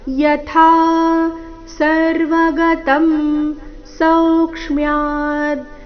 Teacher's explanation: ಯಥಾ ಥಾ ಮಹಾಪ್ರಾಣ ದೀರ್ಘ